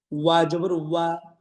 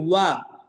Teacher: ওয়া উচ্চারণ হবে ঠোঁট গোল করে, দেখেন এই ঠোঁটটাকে গোল করে দেখিয়েছে আমাদেরকে।